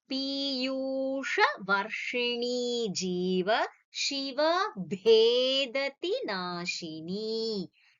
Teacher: Ni over here is not Hriswa, it is a Dirgham. So, Ni, you have to extend it to the two Kala Matra.